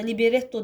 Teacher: Liberetto deyirəmsə, vurğu retə düşür